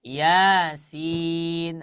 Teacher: Yang iya-nya dibaca 2 harokat. Yasin. Maka jangan dibaca lebih daripada dua harokat ya.